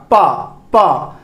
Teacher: पा को बोलने के लिए आपको अपने लिप्स को क्या करना पड़ेगा? टच करना पड़ेगा, टच करवाना पड़ेगा।